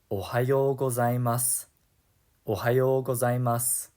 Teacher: A more polite way to say good morning is ohayo gozaimasu, ohayo gozaimasu. Notice how we don't really pronounce the final u sound here in gozaimasu. In Japanese, it's common to drop the u and i vowel sounds, especially at the end of sentences.